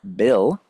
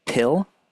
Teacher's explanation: So if you hold your hand over your vocal cords and you say P, or you say pill or bill, you'll notice at the very start of the word, you can feel the vibration more for a word like bill rather than pill.